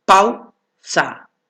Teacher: Pero en este caso es un diptongo decreciente, porque empieza por el fuerte y termina por el débil